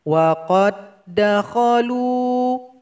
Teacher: Karena huruf dal yang sukun kita tinggalkan. Qaf yang berharokat fathah langsung kita masukkan kepada dal yang bertasdid. Salah kalau dibaca wa qad dakhalu, nggak boleh. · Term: idgham mutamathilain